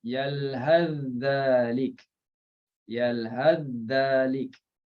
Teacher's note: kita akan baca memasukkan sa dalam dal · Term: idgham